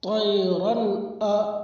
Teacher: 2 زبر کی تنوین کے بعد حروف حلقی کے 6 حرفوں میں سے حمزہ ہے، اس لیے 2 زبر کی تنوین کو ظاہر کر کے بلا غنہ کے جلد پڑھیں گے، اسی کو اظہار کہتے ہیں۔ الف سے پہلے زبر ہے، اس لیے الف مدہ ہوگا، الف مدہ کو ایک الف کے برابر کھینچ کے پڑھے۔